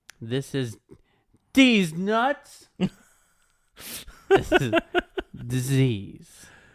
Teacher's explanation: Replace th with the Z sound.